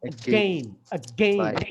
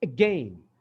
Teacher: ঠিক অ্যাগেইন এর ওটা দেখো, ওটা উচ্চারণ হচ্ছে অরিজিনালি again, again। আটা কিন্তু হাওয়া হয়ে গেছে, অলমোস্ট নাই, শুধু গেইনটা শোনা যাচ্ছে